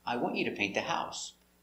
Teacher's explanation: Important words, stressed. Want, you, and paint. The action, the person, and the action.